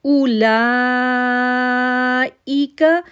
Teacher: لا کو ہم نے 6 سیکنڈ کے لیے کھینچا کیونکہ لا کے اوپر جو ہے مد لازم ہے. جب مد لازم آ جائے تو اس کو ہم 6 سیکنڈ کے لیے کھینچتے ہیں.